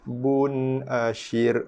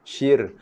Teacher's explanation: ra dibaca dengan nipis sebab sebelum dia ada baris bawah. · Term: ra nipis